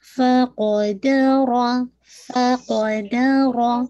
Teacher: فا ہمس کے ساتھ، قاف شدہ لیٹرز ہے تو اس میں کوئی ایئر باہر نہیں آئے گی